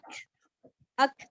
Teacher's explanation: اب جب آپ اس کو پڑھتے ہیں، اس کو تو آپ پڑھتے ہیں اک، تھوڑی سی کھ کی آواز آئی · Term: قلقلہ